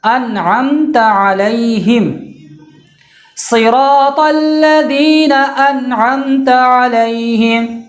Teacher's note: میم ساکن میں غنہ نہیں ہوگا بلکہ میم ساکن کو مکمل طور پہ ظاہر کر کے پڑھیں گے